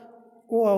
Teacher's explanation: जो कंठ और ओष्ठ की सहायता से बोला जाता है, इसलिए इसे कंठोष्ठ कहते हैं